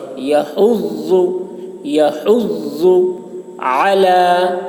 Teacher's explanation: يحض میں ضاد ہے موٹی آواز میں. يحض، يحض على، عین کو حلق سے.